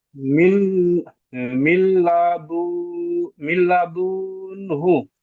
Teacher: নুন সাকিনের পরে ইয়ার মালুনের ছটি হরফের মধ্যে লাম এসেছে, তাই একে বিনা গুণায় মিলিয়ে পড়তে হয়।